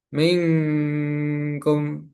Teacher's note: Yang pertama adalah nun bertemu dengan kaf dibaca samar berdengung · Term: ikhfa